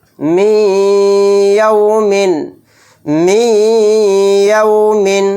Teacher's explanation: نون ساکن کے بعد یا آ گیا تو اس میں ادغام یا یعنی ادغام مع غنہ کا قاعدہ ہو رہا ہے ، یعنی میم کو یا میں ملا کر تھوڑی دیر آواز